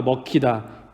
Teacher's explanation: 기역 소리와 히읗 소리, 즉 기역과 히읗 소리가 합쳐져서 키읔이라는 하나의 소리로 바뀌게 되었죠. 이제 거센 소리 되기 현상입니다.